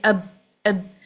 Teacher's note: با کو ساکن کر کے پڑھیں گے اب تو آواز بند ہو جاتی ہے، بلاک ہو جاتی ہے